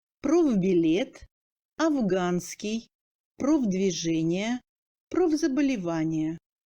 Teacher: Le F se sonorise et passe en V devant une consonne sonore ayant une paire, sauf le V.